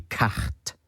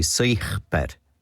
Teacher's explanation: they had or have pre-aspiration, so a ch sound in front of C, T, and P as well